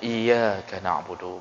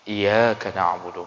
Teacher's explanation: Jadi seharusnya iyyaka na'budu, bertasydid iyyaka na'budu, tapi dibacanya tanpa tasydid iyyaka na'budu.